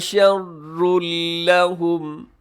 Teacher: شرن کے اوپر تنوین کے بعد لام، یہاں بھی ادغام ہے بغیر غنّے کے، وقف کر دیجیے گا، رموز اوقاف میں سے یہاں پہ تو ہے۔ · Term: ادغام بغیر غنّے کے